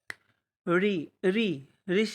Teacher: ऋषि वाला ऋ जो होता है वह मुर्धा के तहत आता है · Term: मुर्धन्य